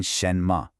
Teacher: a rising second tone followed by a light neutral tone